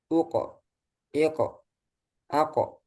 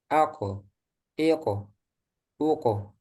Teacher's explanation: Jadi berhentinya itu di udara. Jangan ada tambahan huruf yaitu huruf hamzah.